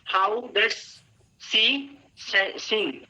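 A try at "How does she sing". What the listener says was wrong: इसको ना प्रोनाउंस करते हैं। स नहीं करेंगे।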